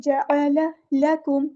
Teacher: لام باریک پڑھنا ہے، کاف بھی باریک پڑھنا ہے، میم کو ہم نے لام کے ساتھ ملا دینا ہے، حمزۃ الوصل ہمارا ڈراپ ہو جائے گا، اور لام ہمارا یہاں پہ لام قمریہ ہے، اس کو ہم ظاہر کریں گے۔